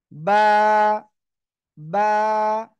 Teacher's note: দুই ঠোঁটের ভিজা অংশ থেকে সিম্পল দুই ঠোঁট বন্ধ করেন, বন্ধ করে উচ্চারণ করতে হবে।